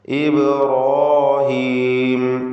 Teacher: റാഇനും അതിൻ്റെ ദീർഘാക്ഷരമായ അലിഫിനും തഫ്ഖീം കൊടുക്കണം, തടിപ്പിച്ച് ഉച്ചരിക്കുക